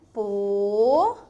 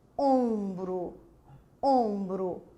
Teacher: O O fechadinho, sem nasalização. Diferente de quem? Do ombro.